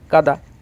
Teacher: তাহলে এই আটা হচ্ছে সানুনাসিক স্বরধ্বনি, আর এটা হচ্ছে নিরানুনাসিক স্বরধ্বনি কাদা, কয়াকার দয়াকার, ক যোগা দ যোগা কাদা। আমাদের নাকের কোনো প্রয়োজনই হচ্ছে না, কাদা। আমরা নাক টিপে বলতে পারছি কাদা।